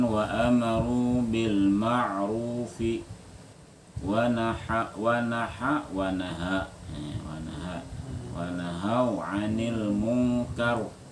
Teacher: ini ra-nya tebal semua nih. Karena fathah sebelumnya.